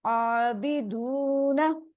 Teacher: आबिदूना, अलिफ मद्दा आ रहा है, वाव मद्दा, उसको टू टू काउंट स्ट्रेच करेंगे